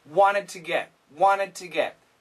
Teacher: So the N cancels the T and this connects.